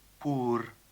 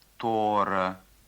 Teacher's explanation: В верховом диалекте чувашского языка звук «о» может употребляться в первом слоге вместо литературного «у».